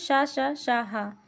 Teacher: हा जो है हमारा वो संघर्षी है और इसके ये ऊष्म व्यंजन के भी अंतर्गत आता है